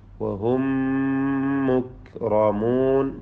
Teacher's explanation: വഹും സാക്കിന മീം ശേഷമുള്ള മീമിൽ പൂർണ്ണമായും ലയിപ്പിക്കണം. ഇദ്ഗാം മിസ്ലൈന സഗീർ.